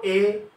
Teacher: এ ঠোঁটের আকৃতি চ্যাপ্টাকৃতি বা প্রসৃত, এ জিহ্বার অবস্থান উপরেও না নিচেও না, উচ্চ মধ্য, ঠিক উপরের কাছাকাছি মাঝামাঝি। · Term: উচ্চ মধ্য সম্মুখ চ্যাপ্টাকৃতি স্বরধ্বনি